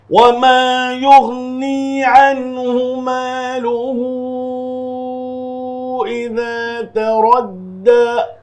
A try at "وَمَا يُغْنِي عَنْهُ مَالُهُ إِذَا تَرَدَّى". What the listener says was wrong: آپ ہر جگہ حا پڑھ رہے ہیں، عن ہو عن حو پڑھ رہے ہیں، اس کو دھیان رکھیے ذرا سا. عنہ یہاں پر نون ساکن کا اظہار ہوگا، نون ساکن کے بعد حروف حلقی میں سے ہا آیا ہوا ہے.